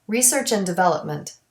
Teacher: delete the D in the word and